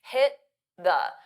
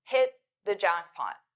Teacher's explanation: So you don't really hear the T. This is called a flap T.